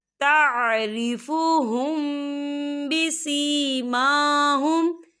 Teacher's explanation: तारिफुहुम बिसीमाहुम, या देखिए तारिफुहुम, यहाँ मीम साकिन है और मीम साकिन के बाद जो है बा आ रहा है, तो यहाँ पर इक़फ़ा शफ़ी होगा और हम यहाँ गुन्ना भी करेंगे।